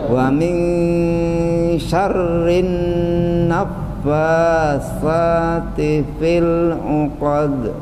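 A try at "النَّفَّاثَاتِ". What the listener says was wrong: Itu yang fa-nya itu kurang dibanyakin lagi Pak. Nah, bibir ketemu gigi atas kan, gigi seri atas. Masih naf kan, kurang ditekan lagi pada gigi.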